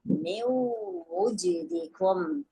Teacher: merge the sound of noon to the sound of wow. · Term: idgham with ghunnah